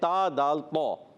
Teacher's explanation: زبان کا سرا اوپر کے دانتوں کی جڑوں سے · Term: تا کا مخرج